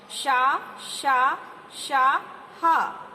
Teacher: गर्म वायु निकलती है, तो ये ऊष्म व्यंजन कहलाते हैं।